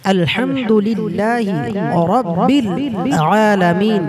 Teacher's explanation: इस पूरे जुमले में रब्बी की रा मोटी पड़ी जा रही है।